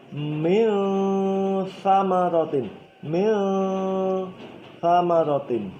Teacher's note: Artinya kamu ketika mau membaca lafaz min famarotin ini, kamu baca min tapi langsung masuk ke makhrajnya huruf berikutnya, dalam hal ini fa. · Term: ikhfa